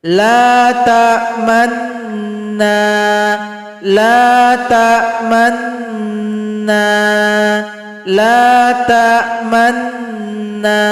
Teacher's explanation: kita monyongkan dari awal gunnah sampai yang terakhir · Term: ishmam